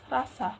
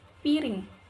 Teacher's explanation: pertama R getar, standar atau formal. Contohnya pada kata rasa. Lalu yang kedua R sentuhan, cepat atau bicara cepat. Contoh pada kata piring.